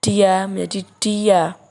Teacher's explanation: bunyi sertaan yang dihasilkan dengan cara lidah Tengah dinaikkan mendekati langit-langit keras atau disebut palatum yang menghasilkan bunyi serta and Y contohnya kata dia menjadi dia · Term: palatalisasi